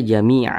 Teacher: berwakaf maka n-nya itu dihilangkan maka dibaca Jamia Jangan dibaca jami'an Jamia dipanjangkan dua harakat ini namanya Mad